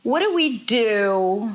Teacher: the we is not reduced, but she's saying it really, really quickly.